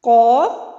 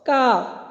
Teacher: ایک موٹی قاف پڑھی جاتی ہے اور ایک باریک کاف پڑھی جاتی ہے